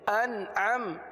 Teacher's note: نون پر قلقلہ نہیں ہوتا، نون میں آواز کو جمائیں گے، قلقلہ نہیں ہونے دیں گے